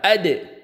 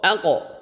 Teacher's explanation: Ab, ke jim, aj, ke dal, ad, ke to, alto, ke qaf, alqo. Nah, apapun harokatnya bunyinya dekat ke fathah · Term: qalqalah